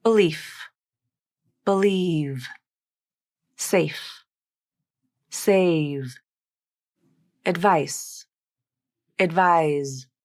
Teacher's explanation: You should hear that the voiceless fricative consonants are held out for slightly longer duration than the voiced fricative consonants